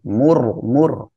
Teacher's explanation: র সাকিন তার ডানে পেশ মোটা করে পড়বেন